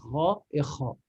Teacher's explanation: tout en haut de la gorge, c'est avant d'arriver à la langue. Là, c'est ra et kha.